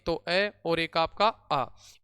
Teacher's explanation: इनका उच्चारण स्थान कंठ से होता है, जिसमें अपने दो स्वर आते हैं, एक तो ए और एक आपका आ।